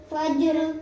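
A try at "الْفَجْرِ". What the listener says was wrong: जिम साकिन को हिलाना है।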